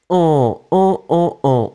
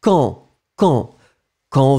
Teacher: So, QU together will give you the sound K, K, K, okay? And then, A-N together is a nasal, so it's en, en, en, en. No N pronounced, final D not pronounced.